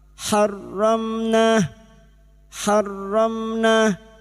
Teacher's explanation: mim sukun bertemu nun idhar syafawi. Mim sukun dibaca jelas tanpa mendengung.